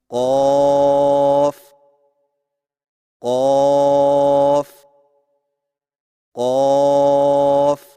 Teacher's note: قاف کی ادائیگی میں زبان کی جڑ کو کوے کے متصل تالو پر لگا کر موٹی آواز میں پڑھیں